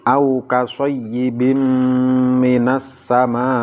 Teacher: Contoh berikutnya adalah au kasoyyibim minas sama. Ada tanwin bertemu dengan mim, tanwinnya dilebur dan dimasukkan ke mim disertai dengan mendengung. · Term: idgham bi gunnah